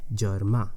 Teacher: That first E is unstressed, so it's a neutral vowel